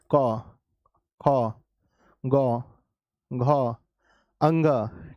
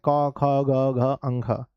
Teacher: तो जब हम क कहते हैं तो हमारा ज्यादा बल जो पड़ता है बच्चों वो कहाँ पड़ता है? वो हमारे कंठ पे पड़ता है।